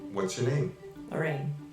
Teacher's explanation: my melody went down